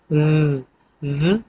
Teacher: जब आप अदा करेंगे तो आपका गला जो है वो वाइब्रेट करता है